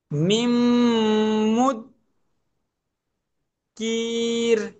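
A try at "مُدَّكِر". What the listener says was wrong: মুদ্দা, তাসদিদ double করবো তো। নিম মুদ্দা কি।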